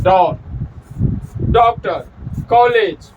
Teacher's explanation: ये जो है आ और ओ, आ और ओ के बीच में है। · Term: आगत स्वर